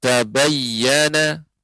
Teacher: huruf Dal dilebur ke dalam huruf ta hingga tak yang bertasydid hilang huruf Dal nya